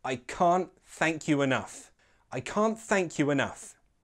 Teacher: it sounds more natural to make that T in can't a glottal T, so altogether it sounds like I can't thank you enough.